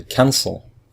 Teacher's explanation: So the first syllable is stressed